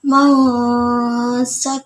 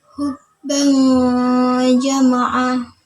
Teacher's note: ikhfa ausat atau Tengah jadi pertengahan antara bunyi n dan ng